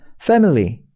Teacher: FA 다음에 MI가 찍히는데 그 I 슈합니다. 강세가 앞에 fe에 있어요. fe. 그리고 family 할 때 그 fe는 그 이제 턱 벌려야 되는 에예요.